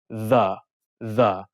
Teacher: the is hard or voiced you hum